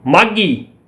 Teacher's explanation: ਮਾਘੀ ਦੇ ਵਿੱਚ ਅ ਦੀ ਜਿਹੜੀ ਸੁਰ ਆ ਉਹ ਉੱਚੀ ਹੋ ਗਈ, ਮਾਘੀ। ਇੱਥੇ ਇਹ ਉੱਚੀ ਸੁਰ ਦੇ ਵਿੱਚ ਆਉਂਦਾ ਆ ਕਿਉਂਕਿ ਦਬਾਅ ਪਹਿਲੇ ਸਵਰ ਤੇ ਆਉਂਦਾ ਆ।